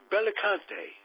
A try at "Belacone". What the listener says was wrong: Belacone, no T.